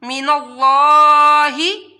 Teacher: लफ्ज़ अल्लाह को मोटा पढ़ना है क्योंकि इससे पहले ज़बर आ रही है, इस वजह से, और लफ्ज़ अल्लाह के ऊपर भी खड़ा मद है तो लफ्ज़ अल्लाह को भी एक अलिफ के बराबर आप लोगों ने लंबा करके पढ़ना है।